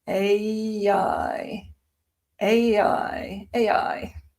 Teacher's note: when you say them together you get um an intrusive y sound. Ai ai.